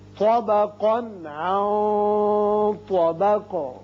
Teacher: طا کو پر پڑھیں گے طا، اور قاف کو بھی پر پڑھیں گے، لیکن اس کی جو تنوین کا نون ہے اس کا اظہار ہوگا آگے، چونکہ عین حروف حلقی میں سے آ گیا. اس نون پر اخفا کریں گے اور آگے طا حروف مستعلیہ میں سے ہے، لہذا اخفا کی آواز ذرا پر کر کے ادا کی جائے گی اور قاف ساکن کر دیں گے.